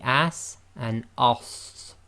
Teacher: the sad is effectively the heavy full mouth version of the sin